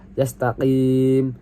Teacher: yastaqim di sini dibaca matobi'i karena yaknya dibaca panjang 2 harokat